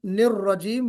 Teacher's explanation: रा पर तशदीद और रा की तकरीर